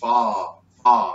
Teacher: It's forward. It's a forward ah sound.